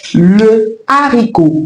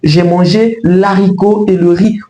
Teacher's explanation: la consonne H est bien présente dans la prononciation de ces mots, d'où elle bloque la liaison et elle nous empêche à élider l'article défini, c'est-à-dire à supprimer la voyelle d'un article défini. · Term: H aspiré